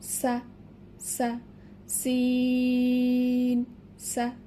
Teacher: জা এর মাখরাজ যেখানে, সিন এর মাখরাজ একই স্থানে, শুধু এটি একটু ঝাঁঝালো আওয়াজ হবে